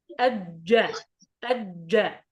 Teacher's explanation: الجيم من وسط اللسان ليس من طرف اللسان، من الوسط يا أستاذ.